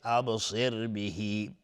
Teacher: صاد از حروف استعلاء غلیظ تلفظ میشه. ابصر بهی را ساکن قبلش کسره اومده ترقیق است